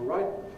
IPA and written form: ˈraɪʔn̩ (writing)